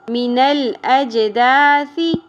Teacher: جیم ساکن پہ قلقلہ ہوگا. ثا نرمی سے ادا ہوگا.